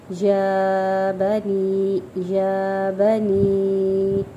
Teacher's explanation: یا کے اوپر کھڑی حرکت ہے تو ایک الف کے برابر کھینچیں گے۔ بنی، مد منفصل واجب یعنی کہ چھوٹی مد، کیونکہ یہ اگلا یا ساکن پہ آ رہی ہے، ٹھیک ہے۔